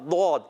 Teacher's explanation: یہ آپ کا بغلی کنارہ اوپر کی داڑوں کی جڑوں میں لگے گا تو ادا ہوگا ضاد